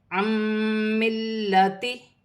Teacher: نون ساکن میں غنہ بھی ہوگا، ملا کر بھی پڑھا جائے گا